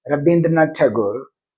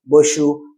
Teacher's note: In Bengali language, there is no wa sound, but they have ba sound.